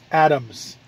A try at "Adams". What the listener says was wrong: Adams. Adams. Gotta say the D. Adams.